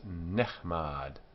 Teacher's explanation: So it's not nichmad, it's nechmad. The strong guttural ch has a simple shwa, which is silent.